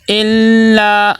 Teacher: لام کے اوپر تشدید ہے، ٹھہراؤ ہو، سختی ہو